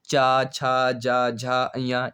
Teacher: तालु या जीभ के स्पर्श से बोले जाने वाले व्यंजन जीभ के मोटे वाले भाग और तालु के स्पर्श से बोले जाने वाले वर्ण तालब्य व्यंजन कहलाते हैं।